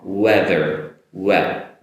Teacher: the wet initially comes off like a ooh, et sound, but not so long.